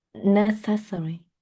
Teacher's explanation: the first syllable, not the second syllable, that is stressed